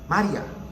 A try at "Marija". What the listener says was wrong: Yeah, so the accent is different, like Mario. So in my language, it's Marija Spasikova. So it's a lot smoother than how No, it's a ya sound.